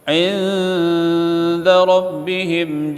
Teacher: Inda nun mati jumpa dengan dal, ikhfa, dengung. Inda rabbihim him, izhar syafawi.